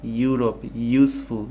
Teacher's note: আমাদের জিহ্বাটা আমাদের উপরের চোয়ালে লেগে তারপর সাউন্ডটা বের হচ্ছে। তো লেটার ভাওয়েল কিন্তু আমরা যখন উচ্চারণ করছি শব্দটি সেটি হচ্ছে কনসোনেন্ট। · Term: কনসোনেন্ট সাউন্ড